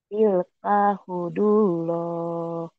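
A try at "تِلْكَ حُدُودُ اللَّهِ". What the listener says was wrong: tilka hududullah. Ada dua tuh dalnya. Tilka hududullah.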